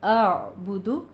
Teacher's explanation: پہلے حمزہ پھر عین کی آواز آئے گی